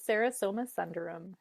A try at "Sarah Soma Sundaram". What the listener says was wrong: Your pronunciation went back to sun.